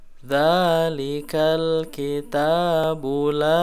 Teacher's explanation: bacaannya itu diayun aja ya jadi jangan sampai offset kepanjangan itu jangan sampai Kepanjangan tapi Cukup Satu Kali Ayunan ya itu dua ketukan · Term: mad asli